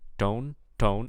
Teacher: I think I'm hearing a unaspirated t